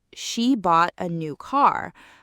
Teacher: I'm emphasizing that she bought it and that it's a car.